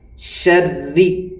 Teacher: تشدید والے حرف کو 2 بار پڑھا جاتا ہے، 1 مرتبہ پچھلے والے حرف سے ملائیں گے، دوسرے خود اس کے اوپر جو حرکت ہے وہ پڑھی جائے گی۔ اب را کے نیچے زیر ہے، اس لیے یہاں را کو باریک پڑھیں گے · را کے اوپر تشدید ہے، اس لیے را کو 2 بار پڑھا جائے گا۔ تشدید والے حرف کو 2 بار پڑھا جاتا ہے، 1 مرتبہ پچھلے والے حرف سے ملائیں گے، دوسرے خود اس کے اوپر جو حرکت ہے وہ پڑھی جائے گی۔